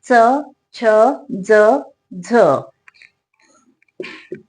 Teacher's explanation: तालव्य म्हणजे टाळू पासून उच्चार टाळू पासून उच्चार म असे तालव्य वर्ण कोणकोणते आहेत तर तालव्य